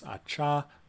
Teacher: if it's voiceless acha then the silence doesn't have a voice bar bar if it's voiced like Aja it does have a voice